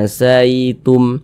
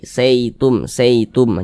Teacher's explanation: berhati-hati ya ketika mengucapkan huruf Lin yang terjadi pada huruf Ya Sukun jangan sampai condong ke huruf e